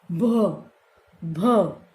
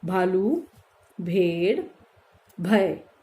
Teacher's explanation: ब से ज्यादा वायु बाहर निकल रही है हमारी भ, तब ये हमारा भ का साउंड हो रहा है।